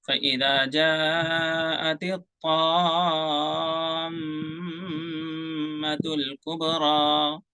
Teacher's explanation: میم کے اوپر تشدید ہے اور تشدید والا مد لازم ہوگا اور اس مد کو ایک الف سے زیادہ کھینچنا ہے